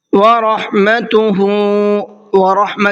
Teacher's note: را کو منہ بھر کے پڑھنا ہے اس لیے کہ را کے اوپر زبر ہے، اور جب را کے اوپر زبر ہوتا ہے تو را کو منہ بھر کے پڑھتے ہیں۔